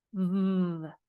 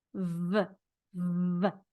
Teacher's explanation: A V is the same as an F. V. One has a voice, one does not. So these teeth touch the bottom lip.